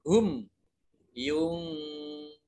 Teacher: mim sukun bertemu dengan huruf ya, ini bacaan izhar syafawi, dibaca jelas.